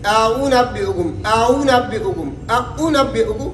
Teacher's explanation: یعنی حمزہ سختی سے پڑھے گا اور واو نرمی سے ہوگا، تو دونوں کے درمیان پڑھیں گے، یعنی حمزہ اور واو مدہ کے درمیان۔ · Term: تسہیل